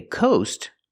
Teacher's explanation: when you go to the ocean you see the coast using the long o sound like no